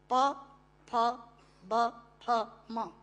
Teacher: पूरा अल्फाबेट हिंदी का जो पवर्ग है वो ओष्ठांग है। · दोनों होंठ मिलाकर बोले जा सकते हैं।